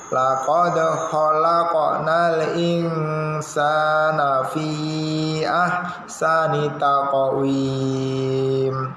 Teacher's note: Karena ini ikfa. Ikfa itu samar-samar. Jadi agak ke NG. · fi-nya 5 harokat, jangan lupa panjangnya